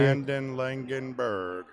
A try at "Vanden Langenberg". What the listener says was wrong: Vanden Langenberg. Vanden Langenberg. No, you said Vanden and then Langenberg.